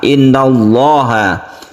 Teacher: lafaz Allah ini disebut dengan lafzul jalalah yang dibaca tafkhim atau tebal karena sebelumnya ada fathah